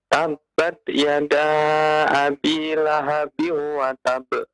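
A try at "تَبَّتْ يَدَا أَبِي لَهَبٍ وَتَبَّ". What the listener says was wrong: Wa tab. Tahan dulu. Ada tasydid di sana. Tabbat yada abi lahabin wa tab.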